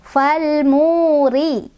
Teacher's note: Ya mad tabi'i karena ada fathah berdiri di atas huruf ya. Cara bacanya dipanjangkan 2 harokat.